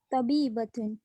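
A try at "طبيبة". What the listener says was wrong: तबीब, थोड़ा और मोटा, तबीबतुन।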